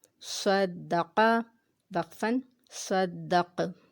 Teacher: یہاں پہ دیکھیں صاد اور قاف حروف مستعلیہ میں سے ہیں اور انہیں ہم نے موٹا پڑھنا ہے